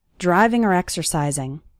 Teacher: often when the word or is between two more important words it sounds like er